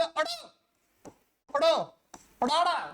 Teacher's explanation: ਸਾਡੀ ਜੀਭ ਝਟਕੇ ਨਾਲ ਥੱਲੇ ਆ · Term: ਫਟਕਵਾਂ ਵਿਅੰਜਨ